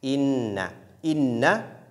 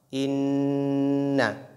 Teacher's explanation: ce son qui sort au niveau du nez qu'on appelle al-ghunna